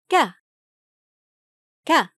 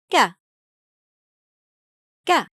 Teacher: It is the equivalent of the English letter K. The sound is Ka, Ka, without so much aspiration as in English. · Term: Kaf